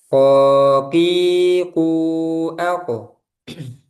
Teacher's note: pangkal lidah dan langit-langit bagian yang lunak, dia tidak keluar udara. Ko, tebal. Ko, ki, ku, ko. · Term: huruf qaf, Huruf qof